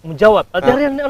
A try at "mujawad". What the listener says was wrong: Bukan mujawab, mujawad.